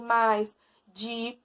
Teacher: Átonos, quando eles são falados de maneira mais branda, suave.